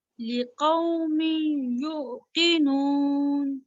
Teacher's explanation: نہیں, جھٹکا نہیں دینا, ٹھیک ہے, جھٹکا نہیں دینا ایک تو آپ نے, اور دوسرا اس کو تھوڑا لمبا کرنا ہے. لقومی, می جو ہے نا وہ ناک میں آواز جا رہی ہے